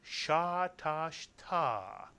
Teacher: And the third syllable is simply ta. Put the 3 syllables together and you get sha tash ta, with the accent on the last syllable.